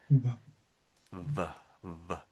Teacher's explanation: dropping my lower lip away from my teeth, and there's a sudden burst of air coming out.